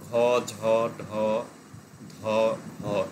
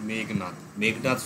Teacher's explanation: fourth sound গুলো হয় ঘ ঝ ঢ ধ ধরে গম্ভীর হয় মানে একটা গুঞ্জন মতন তৈরি হয়